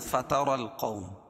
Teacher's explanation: فتر را پور ہوگی کیونکہ را کے اوپر زبر ہے. فتر القوم، واو ساکن سے پہلے زبر ہو تو واو لین، فیہا یا ساکن سے پہلے زیر ہے تو یا مدہ، اس کو ایک الف کے برابر کھینچ کے پڑھیں گے.